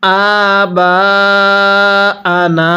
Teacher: হামজায়ের মধ্যে আমরা এক আলিফ টান দিব এবং বায়ের মধ্যে 4 আলিফ টান দিব